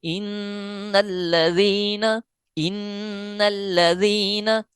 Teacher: یہاں نون مشدد کا قاعدہ اپلائی ہو رہا ہے، یعنی نون مشدد پہ ہم نے غنہ کرنا ہی کرنا ہے